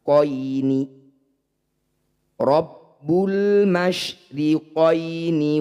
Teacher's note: Ya Sukun didahului fathah disebut bacaan mad lin bunyi ya baca dengan lembut atau dibaca lunak